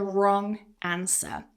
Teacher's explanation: Whenever you have W and R together in a word at the start, the W tends to be silent.